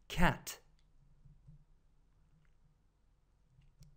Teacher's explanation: това е звук между а и е отваряте устата си за да кажете а и изненадвате противника като кажете е